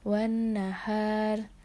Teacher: Di sini hukum bacaannya yaitu terdapat idgham syamsiyah karena ada alif lam bertemu dengan nun. Lalu terdapat hukum bacaan gunah karena nun bertanda tasydid. Dibaca dengan dengung dengan panjang 3 harokat. Terdapat juga huruf H yang berharokat fathah bertemu alif yang disebut mad tabi'i, dibaca dengan panjang 2 harokat.